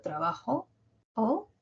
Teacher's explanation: Mi O ha sido más aguda que trabajo, que es más grave. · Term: tonema final